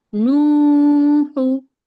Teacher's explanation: नू को जी खींचेंगे क्योंकि वाव मद्दा हो रहा है, اور ہاں پہ پیش کی حرکت ہے اور حرکت کو ہم بالکل نہیں کھینچتے.